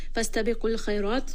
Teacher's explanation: Qaf is heavy, Kha is heavy, Ra in this case is heavy